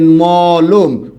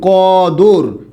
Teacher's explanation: দ্বিতীয় বর্ণের যে অ সেই অ এর উচ্চারণটা কি হবে ও হবে